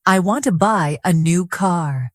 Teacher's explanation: The strong words are want, buy, new, and car. The others are softer.